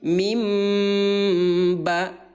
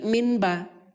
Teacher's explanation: Yang diganti adalah suara nun yang baris mati menjadi suara mim. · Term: iqlab